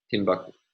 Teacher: we have a primary stress on the final of three syllables